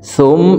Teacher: তাসদিদওয়ালা মিমের সাথে 3 সেকেন্ড পরিমাণ গুন্নাহ করে ধরে রেখে পড়ব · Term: ওয়াজিব গুন্নাহ